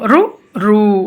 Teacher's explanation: కలయిక వల్ల సో దంత్యాలు next మూర్ధన్యం ఇవి అంగుటి ద్వారా పర్యవేష్టిత జిహ్వాగ్రం పర్యవేష్టిత అంటే వెనకబడిన నాలుక మడతపడి అంటే నాలుక మడతపడి ఈ అంగుటి తోటి మనం పలుకుతాము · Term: ముద్దన్యాలు, మూర్ధన్యాలు